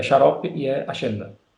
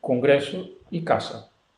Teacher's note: vocês brasileiros fazem diferença de xarope para agenda, que é sonoro, e a gente não faz diferença. Então é tudo surdo. · hoje em dia pronuncia em todo o paradigma, né? Em todos os contextos, com as sibilantes surdas